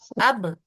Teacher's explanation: جب اس کا وقف کرتے ہیں تو اس کی آواز پلٹ کے واپس آتی ہے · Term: قلقلہ